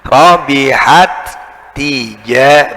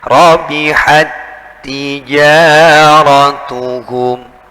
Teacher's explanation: tak yang sukun yang di depan itu dimasukkan, digabungkan dengan tak yang hidup di depannya, di belakangnya, ya, yang di selanjutnya. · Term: idgham